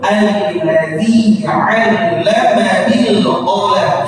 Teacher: Alladzi di sini jangan banyak panjang.